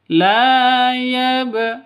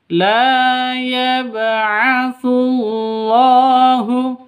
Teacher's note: Karena di tengah berarti qalqalah sughra. La yab, harus dipantulkan ke huruf qalqalahnya, ke ba-nya.